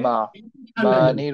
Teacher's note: এখানে যেন ম্যা না পড়ে আমরা পড়বো হচ্ছে মানির